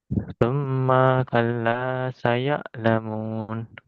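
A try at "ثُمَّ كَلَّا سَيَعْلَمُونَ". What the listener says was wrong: Ma-nya pendek, kalau nggak ada alifnya itu pendek. Kalau pendek langsung mengucapkan huruf yang setelahnya, jangan menunda, jangan berhenti di huruf tersebut. Tadi kan dibaca summa kalla saya nggak boleh langsung summa kalla saya lamun.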